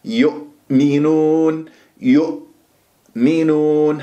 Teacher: لازم اقفل الاوتار الصوتيه في منطقه اقصى الحلقه هذه الهمزه · تقول يو، يؤمنون، يؤمنون، حتى لا تقلقلها تقول يؤمنون أو يؤمنون، لازم أقفل الأوتار الصوتية في منطقة أقصى الحلق جيدا حتى لا تقلقل معاي هذه الهمزة